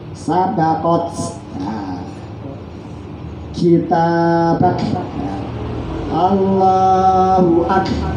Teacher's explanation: terutama kaf dan ta bersukun diwakofkan hamasnya terasa.